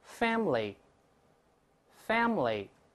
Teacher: 注意▁family▁读快了之后，中间那个▁a▁依然不发音